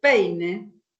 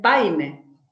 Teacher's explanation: hay una sustitución de E por A en el eje vertical